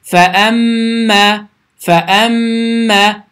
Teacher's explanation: iki saniyə dayanırıq və səs burundan tələffüz olunur